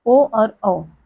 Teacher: कंठोस यानी कंठ और ओठ दोनों से उच्चारित होने वाले वर्ण